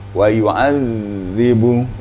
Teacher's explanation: Jadi lidah dipertemukan dengan gigi depan, papan gigi depan agak lama sedikit.